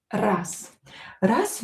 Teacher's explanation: voiced consonant located at the end of the word will become unvoiced z will become s.